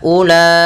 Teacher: pada lafal ulaika unya tidak boleh kita panjangkan